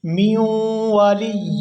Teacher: یہاں میم کو واو مشدد کے ساتھ ملائیں گے. میم واو زیر میوں واو زبر وا میوں و لام یا زیر لی میوں والی یا واو دو زیر یوں میوں والی یوں ولا نصیر.